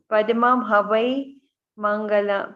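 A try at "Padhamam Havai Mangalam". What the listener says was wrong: Hoi Mangalam, not ho. What you said was slightly different. Hoi Mangalam.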